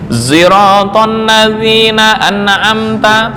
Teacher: Ishmamus sod sautazai. Artinya sod dibaca ishmam, ya, diganti dengan suara za.